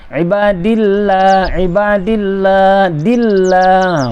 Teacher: Ibadillah, kalau baca ibadullah tak betul, ibadillah tak betul, mesti nipis. Bila baris kasrah atau di baris bawah, dal tu baris bawah berjumpa dengan lam jalalah tadi, mesti dibaca nipis.